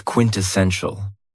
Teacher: And this word has 4 syllables. And the stress is on the third syllable.